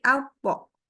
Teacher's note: Jadi waktu pas masuk bunyi sukunnya, pangkal lidah tetap naik dengan lidah tengah juga tetap naik. Sehingga bunyinya bukan at, tapi alpo. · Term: qalqalah